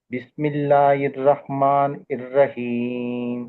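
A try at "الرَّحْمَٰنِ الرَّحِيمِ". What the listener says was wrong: ఇక్కడ ఇర్ రహమాన్ అంటున్నారు, ఈ కాదు హీ రావాలి.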